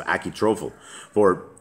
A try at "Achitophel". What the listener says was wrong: Achitophel. There's no R. You're saying tro.